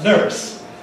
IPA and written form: nɝːs (nurse)